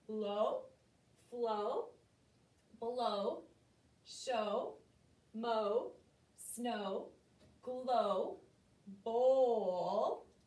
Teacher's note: you don't hear the W at all. All you hear is the long O sound.